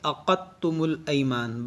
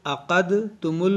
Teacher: اس دال کو نہیں پڑھا جائے گا، اس دال اس تا میں داخل ہو جائے گا